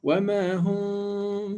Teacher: So I will pronounce this meme with hiding, meaning I'm going to slightly open my lips. · in my pronunciation of the meme, I'm going to do ikhfa or hiding, and I'm going to do 2 units of length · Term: Ikhfa Shafawii